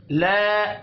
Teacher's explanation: الف مدہ ہے، 1 الف کے برابر کھینچ کر پڑھیں گے